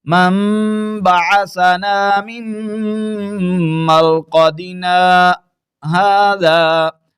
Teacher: آواز کو تھوڑی دیر کے لیے ہم نے روکا ہے، سانس نہیں توڑا، تو آپ یہاں پر وقف بھی کر سکتے ہیں، اور اگر روانگی کے ساتھ پڑھتے ہوئے جا رہے ہیں تو پھر سکتہ کرتے ہوئے آپ اس کو پڑھ لیں۔